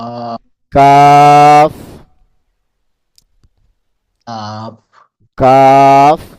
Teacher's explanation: জিহ্বার গলা থেকে একটু আগে বাড়িয়ে তার বরাবর উপরে তালুর সঙ্গে লাগিয়ে উচ্চারিত হয় একটি হরফ, সেটি হলো কাফ।